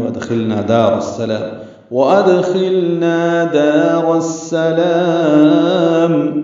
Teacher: حمزہ کو دال سے ملانا ہے، دال پہ قلقلہ ہے